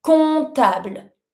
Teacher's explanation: never pronounce the P. So you avoid the P.